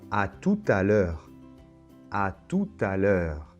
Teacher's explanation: on va prononcer le T final de tout parce qu'il y a ce phénomène de la liaison